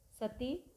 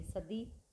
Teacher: अघोष ध्वनियों को सघोष ध्वनि में बदल रहे हैं। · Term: सघोषीकरण